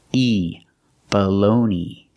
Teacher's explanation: And the last syllable is E. It's the long E, like green bean.